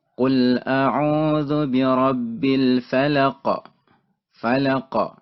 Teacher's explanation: Tapi karena kita wakaf di sini, berhenti di sini pada akhir ayat, maka dia menjadi sukun. Maka cara baca qaf yaitu dengan diberikan pantulan suara. Karena dia merupakan salah satu huruf yang qalqalah, yang memiliki pantulan suara.